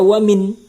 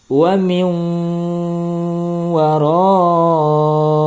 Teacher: Nah, nun mati bertemu dengan huruf waw. Nah, maka bunyi nun matinya masuk ke dalam huruf waw. Tidak lagi dibaca wamin. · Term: idgham bi gunnah